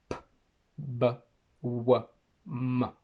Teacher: We have bilabial, where both lips come together.